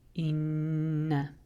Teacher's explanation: So instead of saying this word, hamza kasra noon shadda, in, then saying directly noon fathana, inna, just the fact that this is a noon with a shadda triggers the rule ghunna. So that means we're going to hold it a little longer, 2 extra harakat, and say inna.